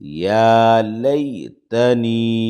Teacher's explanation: یا مدہ ہے یا ساکن سے پہلے زیر ہے تھوڑا کھینچیں گے